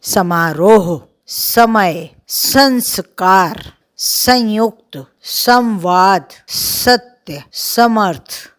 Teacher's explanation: स, जो है दांतों के बीच में जीभ आती है, तो ये दंत स्थान बोला जाता है। इसका उच्चारण स्थान दंत होता है।